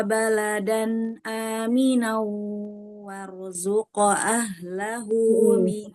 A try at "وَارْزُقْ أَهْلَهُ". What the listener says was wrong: Tebalkan di huruf roh. Warzuq ahlahu. Tebalin lagi rohnya.